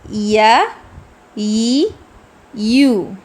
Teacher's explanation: زبان کا درمیانی حصہ اوپر کے تالو کو لگے تو یا ادا ہوگا